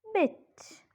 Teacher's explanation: the hinder part of the front of the tongue is raised to a position just above half close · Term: short vowel